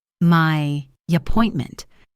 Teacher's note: native speakers often insert a very slight Y glide. It sounds like my appointment.